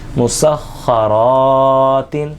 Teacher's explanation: تا دو زیر تین، مسخرات. خا یہ حروف مستعلیہ میں سے ہے، اس کو موٹا پڑھیں گے، اور را کے اوپر زبر ہے، را کو بھی موٹا پڑھیں گے. الف سے پہلے زبر آ رہا ہے، الف مدہ بھی ہو رہا ہے، ایک الف کے برابر را الف زبر کو کھینچ کر بھی پڑھیں گے.